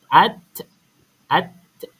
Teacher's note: Hujung lidah kena dekat gusi dalam tu. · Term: huruf ta